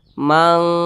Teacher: Kalau kita lihat di samping, huruf kaf ternyata masuk ke dalam huruf ikhfa hakiki, dan dia tergolong kepada ikhfa hakiki ab'ad. Nah, jadi cara membacanya itu disamarkan dan juga didengungkan. Akan tetapi bunyi dengungnya dia lebih tinggi. Nah, maka bunyi engnya itu dia lebih kental.